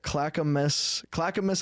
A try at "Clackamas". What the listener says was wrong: You said it right. It's just like a little bit like off. It's Clackamas. It's just one word.